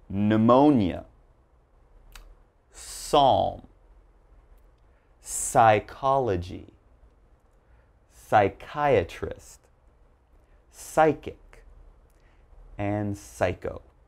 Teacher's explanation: there's a silent p when the word begins with p and is followed by a consonant